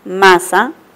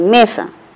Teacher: En la letra C tenemos la palabra masa y mesa. La función se da entre una vocal central y una vocal anterior.